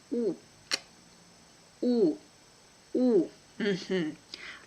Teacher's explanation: It's like English U in flu, but shorter and with the lips more rounded and protruded. When we pronounce E, you can have an image that you want to kiss someone, like ooh, ooh, ooh. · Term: Russian sound U